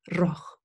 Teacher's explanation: some people, of course, have a trilled R